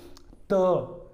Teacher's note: जब इनका उच्चारण करेंगे हमारी जिह्वा हल्का सा दांत से स्पर्श करेगी